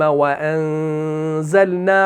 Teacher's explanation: وَأَنزَلْنَا، light غنہ، کیوں؟ کیونکہ زا آ رہا ہے اور زا آپ کا مرقق ہے